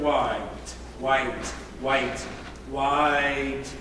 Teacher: a diphthong that has a full vowel and a half vowel, like in the word white, white, white, white.